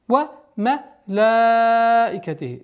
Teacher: Здесь маддуль муттасиль, соединительная долгота в размере 4 огласовок.